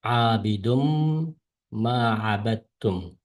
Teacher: Idg'om deyimiz abidun deki bu tanvin, yani du peş. Bu tanvinni biz oxiridagi mim harfiga qo'shib, yani qo'shib o'qiymiz. Yani abidunni abidum deb mim deb o'qiymiz.